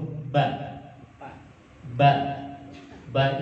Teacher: keluar dari hasil pertemuan antara bibir atas bibir bawah dan itu bibir yang dari luar bukan bibir dari dalam jadi Ba Itu bukan mengucapkannya bukan ba tapi ditarik dulu ba